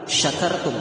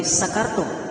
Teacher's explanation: Nah, kalau kita baca sin, kalau sin itu torfus sanaya sufla, jadi ujung lidah dengan ujung gigi di bawah · Tentu huruf shin ini pertengahan lidah dengan langit-langit atas, wastul lisan.